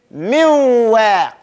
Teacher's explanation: Instead of putting that noon in there, right? Clearly, you jump to the makhraj of the wow.